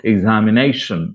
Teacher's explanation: Nay is stressed, given more breath force.